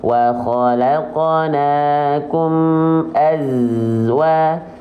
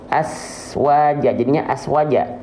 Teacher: Yang ngalir cuman desisan dan suara saja. Nama sifatnya rokhwah. Enggak boleh keluar nafas. Kalau di sini teman-teman keluar bocor nafas jadinya sin. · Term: sofir